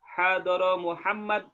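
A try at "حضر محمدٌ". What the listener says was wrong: hadara Muhammadun, kita lagi belajar nahwu, jadi semua baris akhir itu harus ada barisnya. Hadara Muhammadun, jangan disukunkan.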